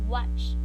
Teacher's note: bilabial and velar. Both lips and tongue raised at the back.